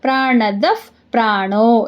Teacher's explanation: ವಿಸರ್ಗದ ಮುಂದೆ ಪ ಇದೆ ಅದಕ್ಕೆ ಅರ್ಧಫ ಆಗುತ್ತೆ